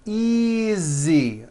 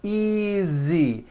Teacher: again the S is like a voiced Z